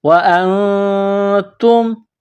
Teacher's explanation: نون ساکن میں آواز ناک میں چھپائیں گے ، اخفا کریں گے، وَأَنْتُمْ، تا کو میم کے ساتھ ملانا